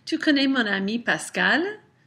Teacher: My voice rises at the end of the statement, and that tells you that it is a question. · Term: Rising intonation